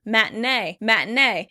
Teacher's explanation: In this word, you're going to hear a big difference between the British and American pronunciation because I tend to change that T into a glottal T.